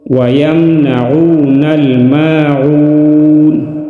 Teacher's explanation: وَيَمْنَعُونَ مدہ ایک الف کے برابر کھینچ کر پڑھیں گے۔ وَيَمْنَعُونَ الْمَاعُونَ، وقف کی صورت میں نون ساکن ہوگا۔